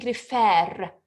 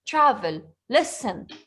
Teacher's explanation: in refer, the last syllable is stressed. In travel, the last syllable is not stressed. So I'm saying refer, it's stressed.